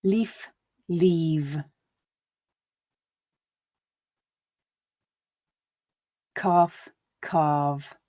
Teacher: these voiced sounds at the end of the words is that you will hear some devoicing of the sound as i switch my vocal cords off before my lips teeth mouth finish making the sound · you'll notice that the vowel sound is slightly elongated before the voiced sound